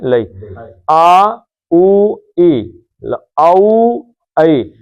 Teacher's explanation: ان سب کا مخرج منہ کا جو خلا ہے یہ ہے. کہیں پہ زبان نہیں لگتی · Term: اصل مد